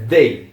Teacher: Mas voltando aqui pros pronomes, they, então não é um T e também não é um s, é uma mistura entre os dois colocando a língua entre os dentes. Então aí fica they.